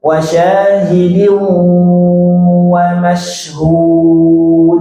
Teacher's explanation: Wa syahidin sambil monyong. Gunnah sambil monyongkan.